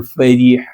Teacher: را پہ زیر باریک پڑھنا ہے